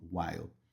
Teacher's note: Então, while, o som termina com L, que a língua fica lá no céu da boca, você joga ela lá para cima